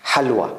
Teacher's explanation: And this Ha is like a, not H, but a kind of H from throat. Something comes out from throat.